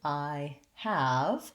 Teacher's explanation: in i have i have a different vowel and i have the h sound there and both of those just need to be completely eliminated to